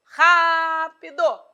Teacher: É um proparoxítona, pois a tônica apareceu na antepenúltima sílaba.